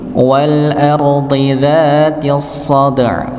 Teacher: Wal ardi, ya yang pertama pada kata wal ardi, al ardi di sini dhanya dia tetap dalam keadaan tebal nggih, bukan wal ardi tapi wal ardi. Ra-nya dibaca tebal, huruf dhanya juga tebal.